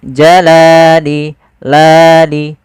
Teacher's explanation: Panjangnya adalah dua harakat. Yaitu kita memanjangkan lamnya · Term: mad thabi'i, mad tabi'i